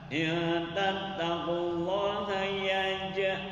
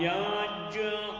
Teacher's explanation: Nah itu qalqalah sugro, pantulan suara yang sederhana. Karena huruf qalqalahnya matinya asal yaitu huruf jim.